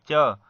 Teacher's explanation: तो आपका जीभ कहाँ स्पर्श कर रहा है, तालु को स्पर्श कर रहा है। जो मुख में ऊपर वाला तालु वाला भाग होता है वहां स्पर्श कर रहा है, इसीलिए इसे हम क्या कहेंगे, तालव्य व्यंजन कहते हैं।